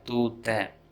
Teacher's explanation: Since this is a class A verb, du sound changes to tu.